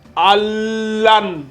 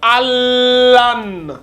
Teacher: Tu fais la fusion. Tu passes du A au lam en appuyant bien sur la shadda.